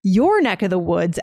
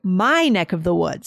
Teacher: So we put the intonation on the your.